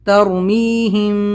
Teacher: میم ساکن کے بعد میں با ہے تو ہم یہاں پر اخفا شفوی کریں گے، یہاں پر غنہ کے ساتھ اخفا بھی ہوگا